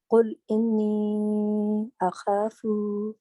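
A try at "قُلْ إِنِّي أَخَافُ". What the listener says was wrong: خاص کو لمبا نہیں کرو، اب دوبارہ پڑھو.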